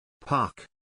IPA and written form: pɑːk (Park)